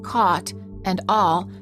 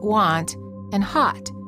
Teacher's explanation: In American English, the aw sound, as in caught and all, is very similar to the ah sound, as in want and hot.